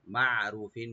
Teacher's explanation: আর আইনটাকে অবশ্যই রাইট দিতে হবে যেন গলার মধ্যখান থেকে আসে।